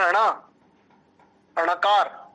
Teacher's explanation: ऐसे ही तीसरा आता है ट वर्ग, ट वर्ग का अंतिम वर्ण होता है अणा, अणकार, इस अणकार का उच्चारण स्थान है मूर्धा और नासिका